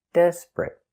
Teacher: And the T at the end is a stop T.